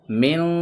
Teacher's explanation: من، لیکن ہمیں من نہیں پڑھنا ہے، اس کو نون کی آواز کو ناک میں لے جا کر پڑھنا ہے۔ جیسے من، یہاں پڑھنا ہے من، اور یہاں پہ پڑھنا ہے من، اخفا اس کو کہیں گے۔